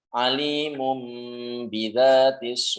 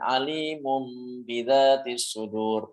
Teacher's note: mengubah nun sukun atau tanwin jika bertemu dengan huruf ba maka diubah-ubah menjadi huruf mim yakin menjadi huruf mim disertai dengan dengung ya dan juga harus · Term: iqlab